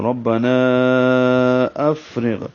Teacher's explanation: ربنا افرغ فا پہ ہمس ہے. اف میں ہلکی سی سانس کی آواز جاری رہے گی پڑھتے ہوئے